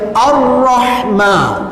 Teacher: A ini kita tekankan terus pada huruf ra yang berbaris sabdu. Sebab itu kita baca Ar-Rahman.